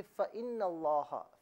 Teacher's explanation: लेकिन अगर मिलाया जाए तो लफ्ज़ अल्लाह का जो हमज़ा है इसे हज़फ कर दिया जाएगा, नून को लाम के साथ मिलाकर पढ़ा जाएगा